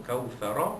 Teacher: Jadi kalau kita wakafkan, maka ra itu dibunyikan tebal, kerana huruf fa sebelumnya berbaris di atas. Kalau kita sambung Kautsara, ra itu berbaris atas, kita baca tebal juga, tafkhim.